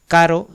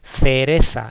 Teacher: yo digo que es una vibrante simple